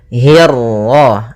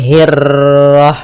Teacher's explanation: untuk huruf ra ketika dia berharakat tasydid itu atau dia berharakat sukun, dia ra-nya 1 kali takrirnya. Tidak boleh banyak-banyak, tidak boleh hirrah.